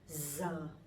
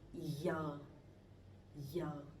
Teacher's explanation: So I'm from the north, I'm from Hanoi, so my pronunciation would be Z.